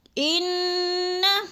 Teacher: انا کی نون مشدد ہے، سختی سے جماؤں کے ساتھ ہم نے پڑھنا ہے، اور اس کو لمبا بھی نہیں کرنا، اس کے اوپر زبر ہے، جیسے ان۔